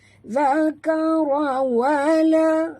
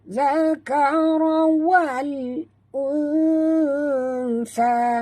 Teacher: bunyikan lam yang mati dengan jelas ya, jangan lantun, jangan baca zakara wala, tak mau baca wala ya. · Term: alif lam qamariyah